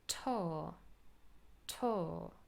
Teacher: words such as tour are not really pronounced with the ur diphthong, but very often nowadays we just say tor